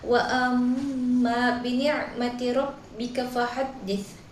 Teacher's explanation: pada lafaz amma itu terdapat hukum ghunna musyaddadah karena mim bertasydid sehingga dibaca dengung 2 harokat